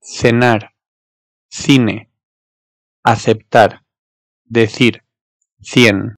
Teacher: Ama yanına E yahut İ harflerini alırsa peltek bir S çıkarıyor. Şimdi bu peltek S'yi çıkarabilmek için dilinizi dişlerinize doğru ittirmeniz gerekiyor.